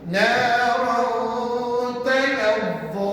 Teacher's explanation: Kita tadi saya tunjukkan kan, nak sebut makhraj nun mati dengan tanwin sama, iaitu hujung lidah tekan pada gusi atas. Tapi oleh kerana hukum ini namanya ikhfa, maka hujung lidah kamu jangan kamu tekan pada gusi. Sebab kalau kamu tekan pada gusi betul-betul, nanti bunyinya jadi jelas, izhar pada dia.